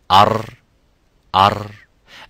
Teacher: So what happens, slightly the Ra, it goes like with sides, as you can see, turns around with the sides, and slightly there is a gap between the gums and the tongue and vibrates once